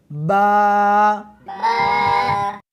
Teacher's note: اس حرف کو دونوں ہونٹوں کے ساتھ ملا کر پڑھیں گے